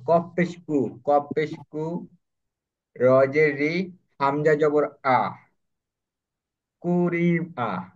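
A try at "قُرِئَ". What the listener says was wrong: এটা সাধারণ কাফের মতো উচ্চারণ হয়ে গেছে।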